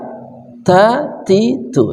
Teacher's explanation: Ta itu ujung lidah bersama gusi gigi seri atas